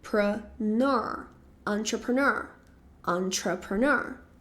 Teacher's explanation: a sílaba tônica, ela vai ser no final